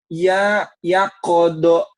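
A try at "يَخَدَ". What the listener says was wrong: khodo, kho, ya khodo. Jangan ada kaknya. Ya khodo, khoir, khoir, khoir. mirip kalau dilatinkan kan KHO ya, khoir. Nah ini kadang-kadang orang bacanya khoir, padahal bukan khoir.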